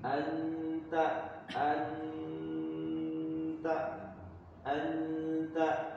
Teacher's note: bukan mengizharkan huruf nun bukan memperjelas huruf nun tapi mencondongkan ke huruf ta